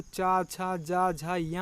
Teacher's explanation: इसका उच्चारण स्थान तालु है, जो कि मुंह के भीतर के ऊपरी छत का पिछला भाग है। इसमें जो वर्ण हैं वो चा, छा, जा, झा, या आते हैं, जो कि चा, छा घोष है, जा, झा, या जो है वो सघोष हैं। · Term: तालव्य